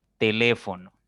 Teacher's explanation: voy a tener tele o no ahí tenemos cuatro sílabas ahora la mayor fuerza la mayor intensidad está en la tercera sílaba